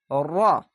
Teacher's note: গাড়ির মত আওয়াজ হচ্ছে র এভাবে উল্টা ভাবে হবে জিহ্বাটা উল্টা তালুর সঙ্গে লাগিয়ে হবে